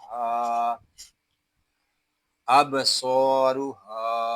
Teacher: ہا کو یہاں ایک الف تک کھینچ کر پڑھیں گے کیونکہ یہاں الف مدہ ہو رہا ہے